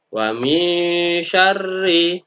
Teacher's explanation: Seperti tadi huruf bacaannya adalah bacaan ikhfa karena shin masuk dari salah satu huruf 15. Maka harus dibaca secara samar-samar disertai sedikit dengung dan ditahan.